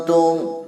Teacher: Nun mati bertemu ta, punya ikhfa, ya.